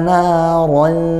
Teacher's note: ro-nya karena fathah juga jangan lupa dia dibaca tafkhim. Tebal, pangkal lidahnya naik